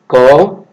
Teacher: আবার এটা যেহেতু শ্বাস কম নেই সেই জন্য এটা অল্প প্রাণ। আবার এটা উচ্চারিত হয় কণ্ঠ থেকে, জিহ্বামূল থেকে, সেই জন্য এটা কণ্ঠ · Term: কণ্ঠধ্বনি